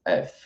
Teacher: Então, por isso que quando a gente fala F, não tem o sonzinho de I depois · Só o ar passando pela boca.